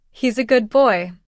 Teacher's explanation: For instance, good boy sounds more like gub boy. The D blends into a B.